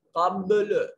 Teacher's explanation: قبل یہاں جو ہے قلقلہ ہو رہا ہے, با ساکن ہے, قلقلہ ہو رہا ہے